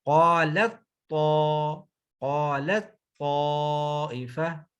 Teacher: قالت طائفہ، اب تو کے اندر شد آ جائے گی، تو کے اوپر شد آ جائے گی اور پہلی تا جو ہے دوسری تو کے اندر مرج ہو جائے گی، تا تو کے اندر مرج ہو جائے گی، داخل ہو جائے گی۔